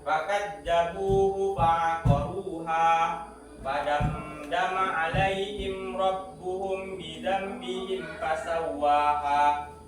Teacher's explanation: membacanya itu samar antara huruf mim dan huruf ba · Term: ikhfa safawi